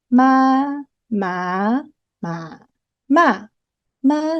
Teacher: the flat tone the rising tone the falling rising and then the falling tone